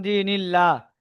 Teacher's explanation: নুনের নিচে জের এসেছে জেরকে তাড়াতাড়ি পড়তে হয় টান দেওয়া নিষেধ আল্লাহ শব্দের ডানদিকে জের এসেছে তাই আল্লাহর লামকে আল্লাহর লামকে বারিক করে পড়তে হবে